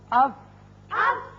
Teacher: اوپر والے دونوں دانت جب نچلے ہونٹ کے اندرلے حصے سے لگتے ہیں تو فا ادا ہوتا ہے